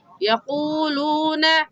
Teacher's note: ہم الذین یقولون، واو ساکن سے پہلے پیش ہے واو مدہ، یہاں پر بھی واو ساکن سے پہلے پیش ہے واو مدہ، اور واو مدہ کو ایک الف کی مقدار کھینچ کر پڑھتے ہیں